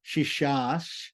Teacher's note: The visarga coming before the palatal C turns into a palatal S